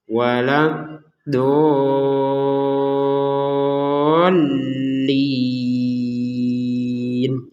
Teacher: Jadi huruf dot tasydidnya panjangnya 6 harokat, kemudian ditekan di huruf lam, kemudian panjang lagi 6 harokat. · Nah, di sini kemudian ada tasydid. Setelah panjang 6 harokat baru ditekan ke huruf lamnya.